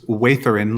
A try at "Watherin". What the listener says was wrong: Little softer th. Yeah, voiced.